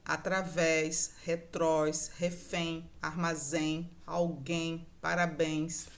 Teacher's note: Percebam que a tônica é sempre a última sílaba